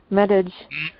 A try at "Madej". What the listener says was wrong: Her name is Dr. Madej. The J is silent.